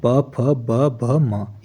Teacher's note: ये होठों से बोले जाते हैं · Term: प वर्क